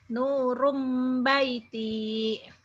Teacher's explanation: karena ketemu ba, bunyi N-nya itu berubah jadi mim, jadi mim kecil, jadi nurum tuh. Nah, ba-nya tetap nurum baiti.